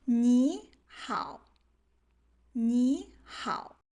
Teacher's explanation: when both two characters in a word have the third tone, the low tone, then we will automatically change the first low tone into a second tone, the up tone